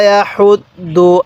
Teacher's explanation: এই হাটা উচ্চারণের সময় মুখ দিয়ে হালকা বাতাস বের করব, তাহলে হাটা সহি উচ্চারণ হবে